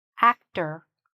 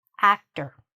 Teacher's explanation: Even though you see an or, we don't say or, we're shortening it, okay? There's a schwa there